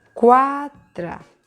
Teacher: És un diftong creixent, perquè primer hi ha la vocal dèbil, o sigui, la U, i després hi ha la vocal forta. De dèbil a fort és creixent.